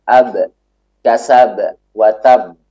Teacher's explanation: Yang memantul itu adalah sifat qalqalah, bukan suara yang mengalir. Suaranya tertahan, namun dia memantul nanti. Sifat memantul itu bukan lawan dari syiddah, bukan suara yang mengalir, namun ada namanya sendiri yaitu qalqalah.